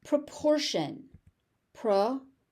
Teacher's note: Proportion. The T is a sh sound.